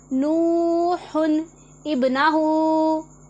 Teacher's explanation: यहाँ पर तनवीन की पूरी आवाज़ दी गई और हमज़ा के साथ बा को मिलाया गया। नूहुन इब्नाहु, ये तनवीन है, उसके बाद हमज़ातुल वसल आ रहा है।